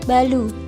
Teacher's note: Pada anak usia 2,5 tahun belum muncul bunyi R atau belum muncul bunyi getar R. Oleh karena itu muncul bunyi sampingan seperti ucapan balu, yang artinya adalah baru, di mana R itu diganti dengan lafaz L.